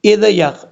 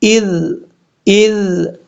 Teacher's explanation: حمزہ کے بعد جو ذال ہے اس ذال میں قلقلہ نہیں ہوگا